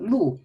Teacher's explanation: fourth tone is a falling tone